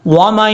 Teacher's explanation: جب یہاں پہ غنہ کریں گے تو آواز کو ناک میں چھپا کر پڑھا جائے گا